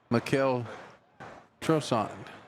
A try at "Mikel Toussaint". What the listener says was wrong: There's no R in it. Mikel Toussaint.